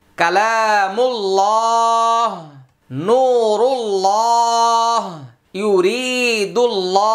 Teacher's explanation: আল্লাহ শব্দের পূর্বে পেশ হইলে মোটা